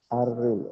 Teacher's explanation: রটা পাতলা হবে কারণ জের আসছে, তো সে হ্যাঁ, কারণে র পাতলা।